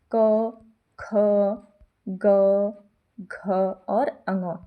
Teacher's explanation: देखिए क वर्ग का जो उच्चारण है ये कहाँ से होता है, कंठ, ये व्यंजन होते हैं, कंठ से इनका उच्चारण होता है